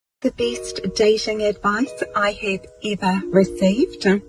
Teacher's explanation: She does a h at the end of every second or third word.